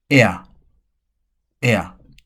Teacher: a gliding vowel formed by two vowel sounds there are no glottal stops or breaks between the vowels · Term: diphthong